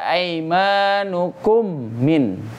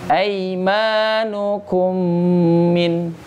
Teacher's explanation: Ya, setiap mim yang bertemu dengan mim atau nun yang bertemu dengan nun, maka bukan saja masuk atau memasukkan bacaannya ke dalam huruf yang kedua, tapi dengan tambahan juga dengan tambahan dengung.